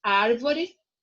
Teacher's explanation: porque a antepenúltima sílaba é a mais forte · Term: proparoxítonas